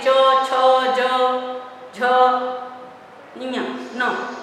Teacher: दूसरा च वाला स्पर्श व्यंजन में, तो च ये तालु में जीभ थोड़ा सा तालु को जाकर स्पर्श करने का प्रयास करती है। च छ ज झ ञ न, तो च वाला वर्ग कहलाता है।